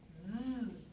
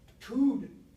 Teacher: Voiced alveolar fricative becomes voiced alveolar stop.